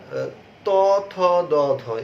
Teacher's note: জিভ কি করে, উপরের দাঁতের সাথে স্পর্শ করে এই বর্ণগুলো বা এই ধ্বনিগুলো উচ্চারিত হয় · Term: দন্তবর্ণ